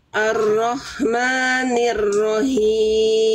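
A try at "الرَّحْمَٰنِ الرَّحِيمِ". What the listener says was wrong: Nah, tapi jangan him, tapi him. Dari tengah tenggorokan, Bunda. H kecil, nafasnya berbisik. Coba ikuti saya. Hi. Bukan hi, bukan itu H besar. Bukan dari sini. Tapi di sini. Berbisik nafasnya, nafas karakternya berbisik, Bunda. Him. Him. Him. coba ikuti saya. Ha. Coba keluarkan bisikannya. Coba. Nah, ha. Ha. Ah, hi.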